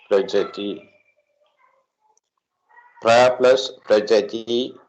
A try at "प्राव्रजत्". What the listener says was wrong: प्राव्रजते प्रा दीर्घः